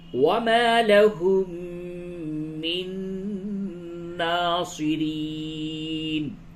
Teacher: میم مشدد ہے، اس جگہ پہ غنہ کیجئے، اور نون مشدد ہے، اس جگہ پہ بھی غنہ کیجئے، دونوں جگہ پہ غنہ ہوگا.